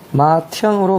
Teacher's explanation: 그럼 여기서 변한 걸 보니까 분명히 앞에 디귿 히읗이 있었는데 여기 사라지고 이렇게 티읕으로 바뀌었거든요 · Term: 축약